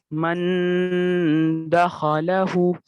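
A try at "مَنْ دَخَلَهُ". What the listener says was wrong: उल्टा पेश है, अच्छे से खींचिए, हु।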